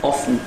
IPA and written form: ˈɒfn (often)